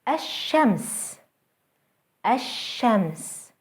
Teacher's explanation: Notice how the sun letter is doubled and how the L sound is lost.